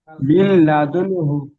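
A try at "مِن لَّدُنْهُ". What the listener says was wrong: গুন্না হবে না । নুন সাকিনের পরে হা এসছে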